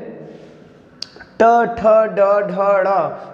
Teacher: अगला जो है ट ठ ड ढ ड़, मतलब ट वर्ग के जो भी वर्ण होते हैं इनको उच्चरित करने के लिए जो जिह्वा होती है वो पलट के पीछे जाती है, अर्थात मूर्धा में टच करती है, मूर्धा को छूती हुई फिर वो आगे निकलती है, तब ये वर्ण उच्चरित किए जाते हैं। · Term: मूर्धन्य व्यंजन